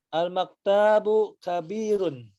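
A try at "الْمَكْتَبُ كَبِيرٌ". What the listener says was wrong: Al-maktabu. Tidak ada matnya ya. Al-maktabu. Bukan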